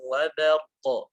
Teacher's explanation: Wa ba tipis, jangan terbawa huruf ra.